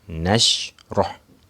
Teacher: Huruf ha itu huruf yang berada di tengah-tengah leher kita.